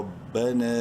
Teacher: تین الف کے برابر لمبا کر سکتے ہیں نون کو